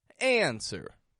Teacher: the stress goes strong weak answer up down high flat